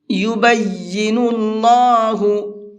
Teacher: یا کے اوپر تشدید ہے تو یا کو ڈبل کر کے پڑھیں گے۔ اکثر لوگ اس کے اندر غلطی کرتے ہیں، یا کو ڈبل نہیں پڑھتے ہیں، تو یہ غلط ہے، اس پڑھنے سے بچیے گا، اور جس طرح سے میں بتا رہا ہوں اس طرح سے پڑھنے کی پریکٹس کیجیے۔